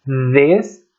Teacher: Eu coloco a língua entre os dentes e forço através das cordas vocais. Eu empurro empurro o ar através das cordas vocais.